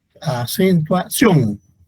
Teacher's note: En la palabra acentuación, la sílaba tónica es sion.